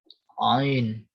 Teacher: Ain, ain itu adanya di halak, tenggorokan, bukan di hidung. Kalau di hidung jadi begini, ain.